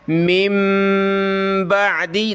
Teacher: نون لکھا ہوا ہے لیکن پڑھیں گے نہیں، بلکہ اس کی جگہ ہم نے میم پڑھنی ہے، یعنی اس میم کو ملانا ہے اس میم کے ساتھ اور اس کے بعد با پڑھنی ہے، اور نون ساکن کی وجہ سے ہم نے یہاں ناک میں آواز پیدا کرنی ہے۔